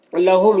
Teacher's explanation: یہاں پر میم ساکن کے بعد میم ہے تو ادغام شفوی ہوگا، اسے غنہ کے ساتھ میں پڑھتے ہیں